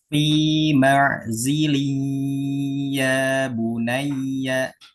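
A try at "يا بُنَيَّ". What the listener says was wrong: Ya, itu ya lumayan. Kemudian ya tasdid itu ditambah nabar. Ya bunayya. Ya bunai.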